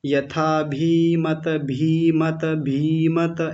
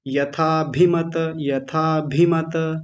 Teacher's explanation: भकार पर इकार जो है ह्रस्व इकार उसको थोड़ा छोटा करेंगे आप लंबा कर गए थे दीर्घ में बना लिया था